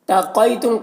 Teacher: تقیتم، قاف حروف مستعلیہ میں سے ہے، اسے پر پڑھنا ہے اور یہاں پر یا ساکن سے پہلے قاف کے اوپر زبر ہے تو یالین ہوا، یالین کو نرم آواز کے ساتھ جلد پڑھتے ہیں